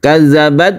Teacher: ketika sukun dia itu kita hembuskan nafas sedikit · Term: mahmus